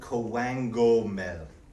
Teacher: The second K actually sounds like a G. So if you were to sound koengomel, but it's still spelt with a K.